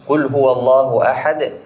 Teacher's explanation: Allah itu di situ tebal juga karena sebelumnya fathah. · قل هو الله أحد الله. هذه لفظ الجلالة وقع قبلها همزة الوصل مفتوحة فيكون الحكم تفخيم